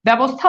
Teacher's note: জফলা যুক্ত যখন থাকে তখন সাধারণত এই জায়গাতে দেখা যাচ্ছে যে আকার চলে আসতেছে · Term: জফলার উচ্চারণ